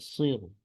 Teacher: معمولی سی پیش کا محسوس ہو کہ جیسے لفظ یوں ختم ہوا ہے کہ ہلکا سا پیش پڑا گیا ہے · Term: روم کے ساتھ وقف